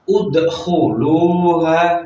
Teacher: huruf kha di sini harus kita baca tebal, tidak boleh tipis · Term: tafkhim